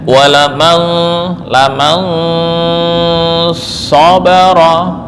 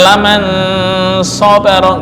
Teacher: Nun sukun ini sudah dibaca dengan tafkhim.